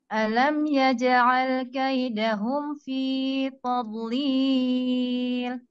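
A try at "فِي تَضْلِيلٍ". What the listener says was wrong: fi-nya nanti dipendekin sedikit ya. Fi tadlil. Cukup 2 harakat.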